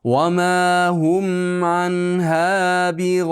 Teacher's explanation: Kasra cho'zganingizdan keyin mana bu hamza, kasrali hamza aniq bilinsin. Ibin bo'lib o'qiyman. · Va ma hum mimga lablar bir-biriga tegadi.